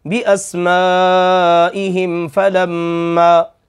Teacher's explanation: اب اس میم ساکن پر غنہ نہیں ہوگا کیونکہ اس کے بعد فا ہے۔